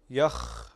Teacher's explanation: هذا الصوت الذي تسمعه هو الرخاوة الموجودة في الخاء، فالخاء من حروف الرخاوة